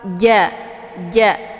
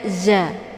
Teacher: ja ini dia tidak boleh dikeluarkan anginnya. Jadi jangan dibaca za.